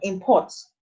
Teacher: when you see in imports the stress is on the first syllable